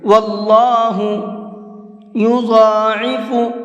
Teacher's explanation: واللہ یضاعف لمن یشاء، اللہ کے لام کو یہاں پر منہ بھر کے پڑھیں گے، یہاں واللہ نہیں پڑھنا ہے بلکہ واللہ یضاعف، ضاد کو منہ بھر کے پڑھیں گے